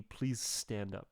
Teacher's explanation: this little linking little hoop thing here just to show that the please stand up they kind of bleed together